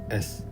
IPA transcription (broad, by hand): ɛs